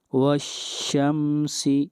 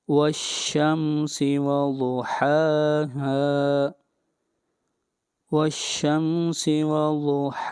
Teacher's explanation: یہاں پر میم ساکن کے بعد سین ہے، نہ میم ہے اور نہ با ہے، اس لیے یہاں پر اظہار ہوگا